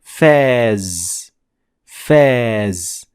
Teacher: a long vowel, ah.